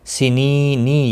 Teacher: علی المحسنین، ہا وسط حلق والا ہے، اس کا خاص خیال رکھنا ہے ادائیگی کا۔ سنینی یا مدہ ہے، ایک الف کے برابر کھینچ کر پڑھیں گے، اور وقف کی صورت میں نون ساکن پڑھا جائے گا، وقف بالاسکان ہوگا، مد العارض وقفی ہوگا، 3 سے 5 الف کے برابر کھینچ کر وقف کریں گے۔